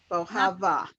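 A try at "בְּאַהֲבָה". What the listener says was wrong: Okay, not bow. bi.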